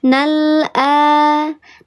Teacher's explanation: Dibacanya lamnya jelas, ditahan atau tawasud dia dialirkan sedikit. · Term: izhar qamari